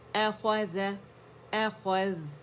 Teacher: او نہیں بولیں گے، حمزہ فتحہ آ ہے